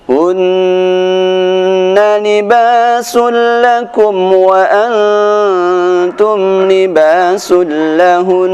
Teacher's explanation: Huruf nun ketika bertasydid maka dia akan dibaca dengan dengung. Ketika di akhir bacaan pun tetap harus dibaca dengan dengung.